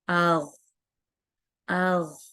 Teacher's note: ये हलक का शुरू का हिस्सा है, ऊपर का हिस्सा, ऊपर का हिस्सा है जहां से गैन और ख्वा अदा होते हैं। और गले में आपको थोड़ी सी खराश सी महसूस होती है, जैसे हम खराश सी करते हैं ना, ये हरूफ वैसे अदा होते हैं।